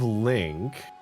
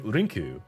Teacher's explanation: they have the R sound instead of the L sound